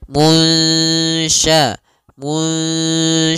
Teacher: secara keseluruhan sempurna atau masih ada sedikit yaitu Idam naqis nah caranya adalah kita samarkan nunnya kepada huruf syin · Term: Ikhfa